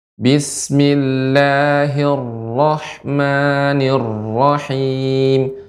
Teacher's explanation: Kemudian koreksian juga ra-nya lebih dikurangi getarannya. Getaran ra lebih sedikit.